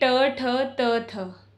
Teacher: अघोष स्वतंत्रियों में कंपन नहीं होता, अर्थात जब हम जिन वर्णों का उच्चारण करते समय स्वर तंत्रियों में गूंज या स्वर तंत्रियों में कंपन पैदा नहीं होता, उन्हें अघोष वर्ण कहते हैं